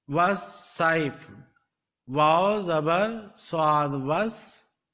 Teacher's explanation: Waw zabar swad was. Alif and lam are again omitted without giving any sound. Wa is joined directly to swad.